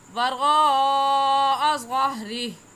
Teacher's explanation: वरा में मद्दे मुत्तसिल है क्योंकि हुरूफ मद्दा के बाद हमज़ा इसी कलमे में है। हुरूफ मद्दा के बाद हमज़ा इसी कलमे में है, इस वजह से इसको मद्दे मुत्तसिल कहेंगे और इस मद को 4 अलिफ के बराबर खींच कर पढ़ेंगे।